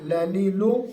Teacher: لام، نون اور را، یہ تینوں کا تقریباً ایک مخرج ہے. لام کا مخرج را اور نون کے مقابلے میں تھوڑا سا لمبا ہے، زبان اس میں تھوڑی سی زیادہ لگتی ہے